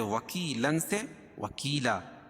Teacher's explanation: وکیلا، یا ساکن سے پہلے کاف کے نیچے زیر ہے تو یا مدہ، یا ساکن سے پہلے زیر ہو تو یا مدہ ہوتا ہے، اس کو ایک الف کے برابر کھینچ کے پڑھیں گے. اور 2 زبر کی تنوین پر وقفہ کی صورت میں ایک زبر کے قائم مقام الف پڑھیں گے اور دوسری زبر اپنی حالت پر باقی رہے گی، جیسے وکیلاً سے وکیلا.